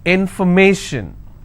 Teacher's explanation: If I have more number of syllables, information, first I will break it, information. So where do I stress? I will stress on may.